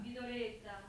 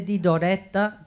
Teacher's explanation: The E in Doretta is actually closed. If in other words, if you say di Doretta, that's open.